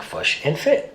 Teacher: the kit-foot vowels are reversed for the words fish and foot to sound like fush and fit